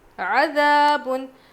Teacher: الف مدہ ہے، ذال ہلکا پڑھیں گے. عَذَابٌ، تنوین کے بعد پہ دو پیش ہے نا، اس کو تنوین کہتے ہیں.